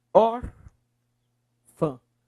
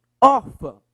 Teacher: Ele tem um tio. Então, ele é um A diferente daquele outro. Ele é um A nasalizado.